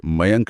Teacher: यह अनुस्वार केवल नाक से बोला जाता है। मुंह से हवा का बहाव लगभग रुक जाता है और सारी ध्वनि नाक से निकलती है। तो अनुस्वार का मतलब सिर्फ नाक का इस्तेमाल।